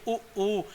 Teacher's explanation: आप बोल के देखोगे उ ऊ, तो ओठ क्या हो रहे हैं, गोल हो रहे हैं, जो गोल हो रहे हैं तो इसीलिए क्या बोल रहे हैं, उनको व्रतमुखी कह रहे हैं।